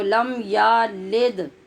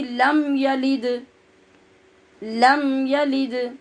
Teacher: کی زیر کو بھی مجہول پڑھتے ہیں، یہ دو غلطیاں ہوگی، ایک تو لام کے بعد یا کو لمبا نہیں کرنا، دوسرے لام کی زیر کو مجہول نہیں پڑھنا